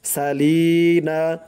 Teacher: লি এক আলিফ টান দিতে হবে, জেরের পরে ইয়া সাকিন